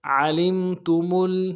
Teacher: عین کو موٹا ادا کریں گے, لام کو میم کے ساتھ ملانا ہے, میم میں تھوڑا سا غنہ کریں گے, تا کو نرم سے ادا کریں گے.